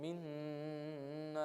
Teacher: we connect the noons and we do ghunna on it. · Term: idgham with ghunna